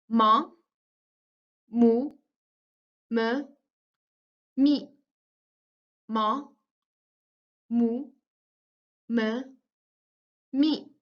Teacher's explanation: we have the sound m, which is voiced, bilabial, and nasal. Nasal because it is articulated in the nasal cavity, and bilabial because we are using both of our lips, the upper lip and the lower lip, when we are articulating this sound.